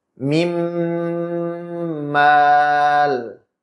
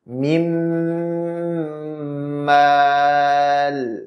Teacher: Nunnya idgham masuk ke huruf mim jadi satu huruf, kemudian hurufnya jadi bertasydid. Makhrajnya jadi satu, kemudian disertai gunnah dengan kadar gunnah akmal ma takun.